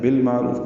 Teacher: بالمعروف میں لام پڑھا جا رہا ہے، اظہار قمری، عین ساکن پہ اظہار ہے، رو را پر ہے اور واو مدہ ہے.